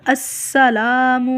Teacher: سین کو اچھی طرح سیٹی کے ساتھ ادا کرنا ہے